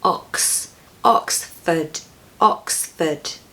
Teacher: Don't pronounce that R in the second syllable, just replace those letters with a schwa